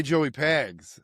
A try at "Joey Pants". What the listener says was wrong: Joey Pants, by the way. Joey Pants, not Pags.